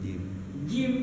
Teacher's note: Tengah lidah bertemu dengan langit langit-langit jim jim ini biar enggak kedengaran becek tempelin kuat